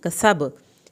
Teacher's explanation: कसब सीन को सीटी की आवाज़ के साथ पढ़ें